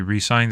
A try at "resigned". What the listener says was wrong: Resign? No, it sounded like you said re-signed. She made another contract?